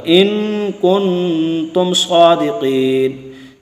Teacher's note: اور ان پر بھی غنہ ہو گیا، کن پر بھی غنہ ہو گیا لیکن تم پر غنہ نہیں ہوگا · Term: اظہار شفوی